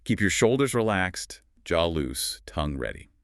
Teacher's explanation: You definitely hit shoulders, loose, and ready the hardest. The words in between felt much lighter and quicker. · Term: stressed words